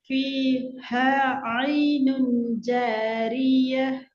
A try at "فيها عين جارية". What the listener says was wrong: ம், ஆனா நீங்க அதை கஷ்டப்பட்டு சி கஷ்டப்பட்டு உச்சரிக்கிறீங்க, அப்படி அல்ல. அது நார்மலாக வர வேண்டிய உச்சரிப்பு. ஹேதான் கஷ்டப்பட்டு உண்டைய சின்னதாக்கி உச்சரிக்கப்பட வேண்டிய.